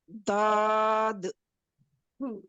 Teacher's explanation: ठीक है, दौद पे आपके थोड़े से होंठ गोल हुए हैं, अपने मखरज पे दोनों साइड जो हैं अपने ऊपर वाले दांतों के दाढ़ों के मसूड़ों से लगाइए